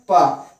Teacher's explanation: जब हम पा बोले हैं प, तो दोनों ओठ जो है सट रहे हैं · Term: ओष्ठ